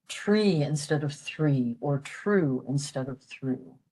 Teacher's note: native Irish speakers and they will say tree instead of three or true instead of through